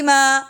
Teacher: ما تین الف کے برابر لمبا کریں گے